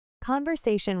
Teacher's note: Conversation with stress on the sa syllable